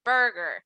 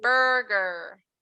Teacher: we have two r's very close together so it's almost like you're not saying any vowels so i'm not going to say burger i'm going to say